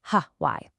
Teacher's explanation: In most American English, Y sounds exactly like Y, as in the letter Y. But in some traditional British English, you'll hear a little puff of air at the start